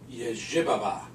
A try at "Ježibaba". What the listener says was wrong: No, no. Accent on the first syllable. Ježibaba. Ježibaba.